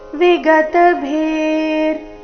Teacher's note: ಭೀ ಮುಂದೆ ಮಹಾಪ್ರಾಣ ದೀರ್ಘ ಇದೆ